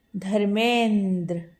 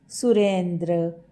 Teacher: अ के बाद ई आने पर इसका परिवर्तन ए में हुआ है, इसीलिए यह बना है धर्मेंद्र। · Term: गुण संधि